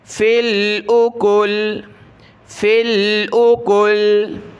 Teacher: जब रुकेंगे वक़फ़ करेंगे तो ये लाम पर जज़म आ जाएगा, यानी सुकून आ जाएगा वक़फ़ पर।